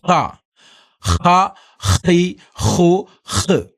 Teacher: ഹാ എന്ന അക്ഷരം തൊണ്ടയിൽ നിന്ന് എടുത്തു കൊണ്ടുവരേണ്ട അക്ഷരമാണ്